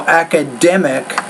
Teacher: their stress on the third syllable